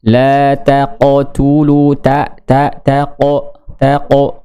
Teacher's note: sifat huruf qaf itu qalqalah, qalqalahnya tebal.